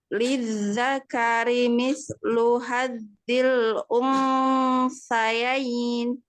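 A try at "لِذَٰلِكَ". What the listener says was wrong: Pertama, ini membaca huruf dha di sini lebih tebal lagi. Ha-nya dibaca ya. Hazi. Ya, jangan digituin. Kalau baca haz itu jadi langsung ke zal. Hazi. Jadi naik pangkat. Hazi.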